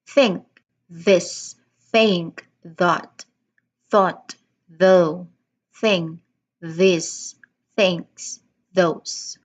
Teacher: it totally vibrates because it's a voiced th sound